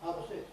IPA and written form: ˈhɑː pə ˈsɪks (half six)